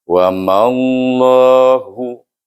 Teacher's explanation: Jadi apa yang perlu kita patuhi hukum iaitu pertama idghamkan mim kepada huruf lam, kemudian jalallah ini dibaca tebal kerana sebelum nama Allah itu mim baris di atas. Wa mallahu hu satu harakah.